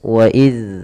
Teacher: tempat keluarnya adalah dari ujung lidah kita menempel dengan gigi seri atas waid Seraya dia kita memiliki sifat yang namanya rakhawah mengalir suaranya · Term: huruf dalal